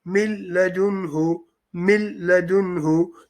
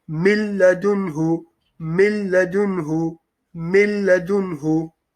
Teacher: You would have noticed you could not hear the noon sakin sound. There's no min, there's no sound at all.